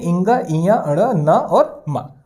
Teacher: example के लिए जब हम पंचमाक्षर का प्रयोग करते हैं दोस्तों, तो ये पंचमाक्षर में होता क्या है, हमारी जो उच्चारण के दौरान जो हवा है दोस्तों, जो वायु है, ये मुंह के साथ साथ नाक से भी निकलती है